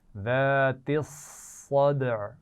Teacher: साद की आवाज़ शुरू से ही मोटी होगी